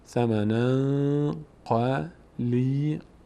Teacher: اخفا میشه ثمن در بینی ادا میشه